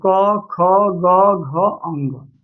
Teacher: क वर्ग का उच्चारण स्थान जो होता है कंठ होता है